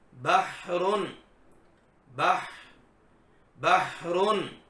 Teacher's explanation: حلق والی ہا، تو یہ حلق کے درمیان میں سے آپ نے ادا کرنی ہے، اور حلق کے درمیان میں سے یہ رگڑ کھا کر نکلے گی۔